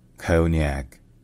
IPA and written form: ˈkəʊn.jæk (konjaku)